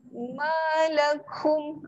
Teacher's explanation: akum ni jangan didengungkan, mim yang bertanda sukun.